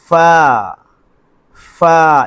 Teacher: فا کو لمبا نہیں کرنا، 2 حرفی ہے، ایک الف کے برابر صرف لمبا کرنا ہے